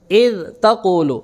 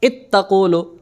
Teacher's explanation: اذ تقول ذال کا تا میں اظہار، اذ تقول ذال کا تا میں ادغام